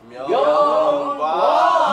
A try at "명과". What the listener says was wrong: 명을 다시 올라가야 돼.